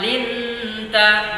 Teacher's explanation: nun sukun bertemu tak. Ini adalah bacaan ikhfa yang dibaca samar-samar